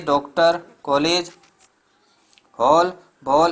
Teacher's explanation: यह ध्वनि बड़ा आ और ओ के बीच में स्थित है।